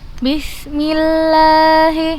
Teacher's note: Untuk lafaz Allah tetap dibaca panjang walaupun harokatnya tidak berdiri. Jadi wajib kita bacanya 2 harokat.